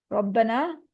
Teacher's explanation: را پہ زبر ہے، اس کو ہیوی پڑھیں گے، الف مد آ رہی ہے، اس کو 2 کاؤنٹ اسٹریچ کریں گے